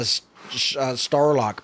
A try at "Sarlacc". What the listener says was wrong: No, you're not saying it right, but I've heard you say it wrong so many times that I don't know how to pronounce it correctly. Sarlacc. Yeah, you put a T in there or something.